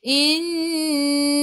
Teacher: Nun ada sabdu, tekan ke dalam nun dan dengung dua harakat, wajibul gunnah.